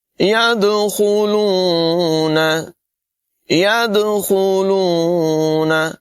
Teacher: دال میں قلقلہ کریں گے، یعنی اس کی آواز کو زور لگا کر اس طرح سے پڑھیں گے کہ آواز ٹکراتی ہوئی محسوس ہو۔